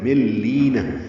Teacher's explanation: اب نون نہیں پڑیں گے، میم کو لام سے ملا دیں گے، یہ ادغام ایک کامل ہے. مل لینا، لی آئے مدہ ہے، دو حرکات لمبا کریں گے.